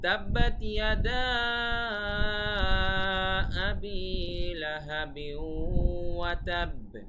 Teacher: লাহাবিন মানে একটু নাকের ভিতরে যাবে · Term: গুণনা